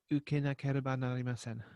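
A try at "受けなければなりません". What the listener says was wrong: Excellent.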